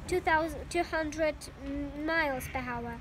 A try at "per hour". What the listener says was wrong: Per hour. Hour. You don't pronounce per H.